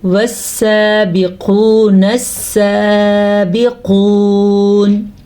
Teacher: اچھا جی، سین کے اوپر کھڑی زبر ہے تو کھڑی زبر کو ہم کھینچ کے پڑھیں گے۔ قاف کو ہم پر پڑھیں گے کیونکہ قاف ہمیشہ ہی پر یعنی کہ موٹا پڑھا جاتا ہے · سین کے اوپر کھڑی زبر ہے تو کھڑی زبر کو ہم کھینچ کے پڑھیں گے۔ قاف کو ہم پر پڑھیں گے کیونکہ قاف ہمیشہ ہی پر یعنی کہ موٹا پڑھا جاتا ہے، اور ابھی میں نے پیچھے جو 7 حروف بتائے تھے ان میں یہ قاف بھی شامل ہے۔